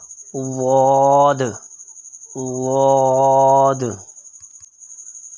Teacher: زبان کی کروٹ جب بائیں طرف والی اوپر کی 5 داروں سے لگے تو واد ادا ہوتا ہے، اور یہ دائیں طرف سے مشکل ادا ہوتا ہے، اور بائیں طرف اگر بائیں طرف والی داروں کے ساتھ زبان لگائیں تو آسانی سے ادا ہوتا ہے۔